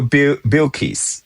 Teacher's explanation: purse your lips for the bill, like you're blowing a W sound instead of an L sound. Your tongue shouldn't touch the top front two teeth for bill the way you would for bill or pill.